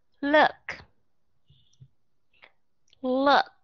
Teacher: chúng ta không phải là u cái miệng lại nữa mà chúng ta hơi thả lỏng cái miệng xuống một chút xíu như có nghĩa là mở cái miệng ra mở ra đúng